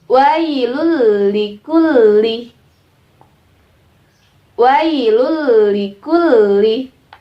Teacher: Jadi dimasukkan tanwin dan nun sukunnya dengan huruf idgham bila gunanya, tapi dimasukkan tanpa berdengung ya. Tanpa berdengung, satu harokat tidak perlu dipanjangkan, tidak perlu hidungnya dimekar-mekarkan, dikembung-kembungkan, karena kalau pakai suara hidung itu adalah gunnah atau berdengung. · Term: bila gunnah